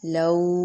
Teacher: لو ہونٹ گول ہوں گے، لاؤ نہیں کریں گے، لاؤ نہیں، لو. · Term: واو لین